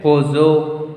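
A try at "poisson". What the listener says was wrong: No, why pozo? O-E will make this sound. O-E. O-E will make wa sound.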